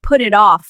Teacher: The t sounds like a fast d. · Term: linking sounds